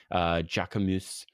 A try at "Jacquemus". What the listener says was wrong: I think that there's no S.